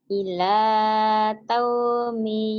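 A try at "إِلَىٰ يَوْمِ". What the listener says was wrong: bukan ta tapi ya titiknya di bawah atuh.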